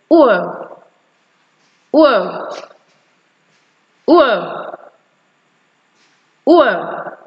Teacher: You discover that your mouth actually moves from being rounded to being relaxed. It moves from being rounded to being relaxed, so that you actually go from articulating the back rounded vowel sound to articulating the central unrounded vowel sound. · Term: diphthong, ur sound